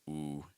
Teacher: I can feel my placement slide really towards my lips. I feel a lot more tension in my mouth area. That's not what I'm going for.